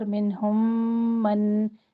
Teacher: اور منہم نون ساکن کا اظہار. منہم من میم ساکن کے بعد میم ادغام شفوی.